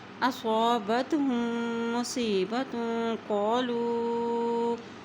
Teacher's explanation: جب میم کے اوپر شد آ جاتی ہے تو وہاں پر غنہ ادا کیا جاتا ہے